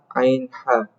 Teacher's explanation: Bagian tengah di sini ada huruf ain dan ha. Jadi kalau kalian menyebutin ain dan ha, kalian ngerasainnya di tengah, enggak terlalu bawah dan enggak terlalu atas.